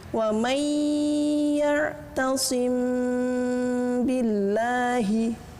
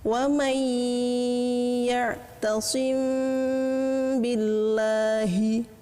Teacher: Nah, jika nanti keadaan ini tersusun oleh adanya mim sukun, kemudian diikuti setelahnya ada mim dan huruf ba, maka cara mengucapkannya, suara mim harus kelihatan samar dan disertai dengan gunnah. Adapun panjang gunahnya atau dengungnya, menurut sebagian ulama ada yang menyebutkan sepanjang 2 harokat atau lebih lama ukurannya dibanding 2 harokat panjangnya mat, ya. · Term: ikhfa syafawi